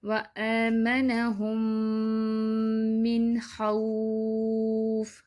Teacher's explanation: اب ادھر بھی میم ساکن کے بعد میم آ گیا ہے تو ہولڈ کریں گے غنہ کریں گے. نون ساکن کے بعد خا پڑھا جا رہا ہے تو یہ اظہار میں سے ادھر نون ساکن کی آواز کو کلیئر کریں گے